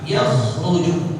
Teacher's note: Jangan sampai hurufnya diganti jadi kha. Jadi dari kha menjadi ha. Baca yahruju salah.